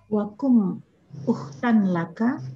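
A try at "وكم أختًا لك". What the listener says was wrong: Ay wakam uhtan laka. Kam, ya. Kum ya.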